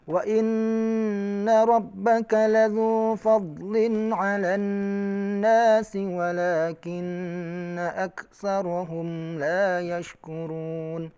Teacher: Huruf nun yang bertasydid itu digunnahkan. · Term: gunnah musyaddadah